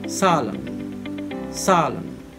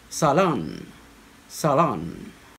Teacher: the british will stress it on the first syllable